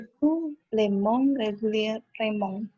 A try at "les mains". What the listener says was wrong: Ini bacanya lemang ya, pakai ang. Lemang. Bukan mong, tapi mang.